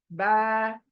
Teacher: बारीक के लिए मुंह चौड़ा होगा, होंठ दोनों खींचे चले जाएंगे, स्माइली फेस। बा करके देखो आप, बा को, बा, मुंह कितना खुला हो जाता है, देखो चौड़ा हो जाता है, बा।